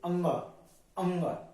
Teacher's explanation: जो आपकी पांचवी लाइन है कचट तप की यही नासिक्य है इसको बोलने में नाक से श्वास निकलती है नाक से हवा निकलती है